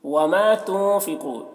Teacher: वमा तुनफ़िक़ू, यहाँ पर नून साकिन के बाद फ़ा हरूफ इख्फ़ा में से है तो नून में इख्फ़ा करेंगे। क़ाफ़ को पुर पढ़ेंगे क्योंकि क़ाफ़ हरूफ मुस्तालिया में से है